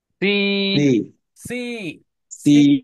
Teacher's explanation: দুইটা ই থাকলে দীর্ঘ ইর মতো একটু লম্বা ই হয়, উচ্চারণটা দীর্ঘ হয়।